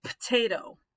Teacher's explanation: if you've heard somebody say potato that's a voiceless vowel